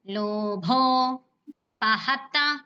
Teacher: భో అనేది మహాప్రాణాక్షరం కాబట్టి అది స్ట్రెస్ ఇవ్వండి లోభో పహత పరస్వంగానే హారస్వంగానే పహత మూడు రస్వాలే అందుకే మనం పహత అనిస్తున్నాం